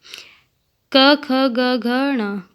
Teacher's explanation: क, ख, ग, घ, ण कंठ से उच्चारित वर्ण।